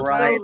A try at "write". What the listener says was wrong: Ini jangan dibaca W-nya ya. W-nya jangan dibaca. To write Linux kernel.